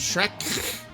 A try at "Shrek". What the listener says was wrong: I'm sorry, Shrek. I'm just trying to say Shret and then Flem. just putting a Flem.